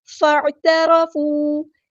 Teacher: تا باریک پڑیں گے، اور را ہمارا ہیوی لیٹر ہے پورا ادا کریں گے